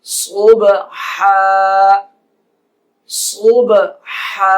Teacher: با ساکن ہے اس لیے قلقلہ کیا جائے گا، وقف صبحا صبحا، ہا باریک گلے کے درمیان والا۔